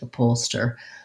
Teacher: it has second syllable stress which means the up is pretty short and unstressed · the h is pretty much silent